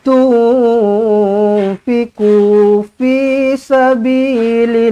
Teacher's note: Nun kosong bertemu dengan fa ikhfa hakiki, dengungkan dua harakat